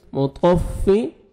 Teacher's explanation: آپ کو لام کو لام کے ساتھ ملانا ہے اور لام کو آپ نے ہلانا نہیں ہے، لل ایسے نہیں پڑھنا۔ ویل للمطفف، طا کو موٹا کر کے پڑھیں گے، مطففین، یا مد ہے 1 سیکنڈ فا کو کھینچنا ہے اور نون ساکن ہو جائے گا جب سٹاپ کریں گے۔